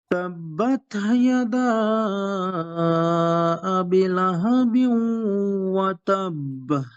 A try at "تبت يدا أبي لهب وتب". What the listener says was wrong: ভাই আবিতে মাদ আছে, হ্যাঁ, আবি কাসরাবি পড়িয়া।